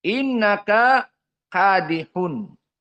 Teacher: innaka bertemu dengan kadihun diidghamkan karena kafnya sama, mutamathilain. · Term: idgham al-kabir